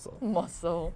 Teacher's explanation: Even though there is a C, you don't make a C sound.